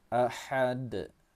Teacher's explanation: ha pedas, ha dari kerongkongan